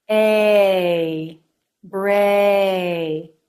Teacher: we have the ay as in say diphthong a for this the jaw drops more for the beginning of the sound and less for the end of the sound